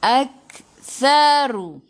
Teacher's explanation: hujung lidah keluar pada gigi depan